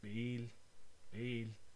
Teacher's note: In Yucatec Maya, this one is bail, bail, where it's the same position of your lips for a B, but the air rushes in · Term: implosives